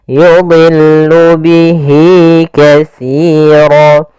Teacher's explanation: dha di sini huruf isti'la termasuk huruf tafkhim, maka dia tetap ditebalkan, bukan yudillu tapi yudillu, kemudian lamnya tipis.